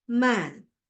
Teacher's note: front unrounded vowel just below the half open position